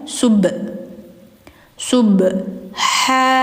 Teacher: Sub-nya harus dipantulkan ya karena ba memiliki sifat qalqalah. Jadi bacanya sub sub ha.